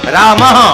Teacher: તમે રામઃ બોલો એટલે શ્વાસ બહાર નીકળે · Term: વિસર્ગ